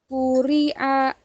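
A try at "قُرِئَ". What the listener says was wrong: Nah, tebal.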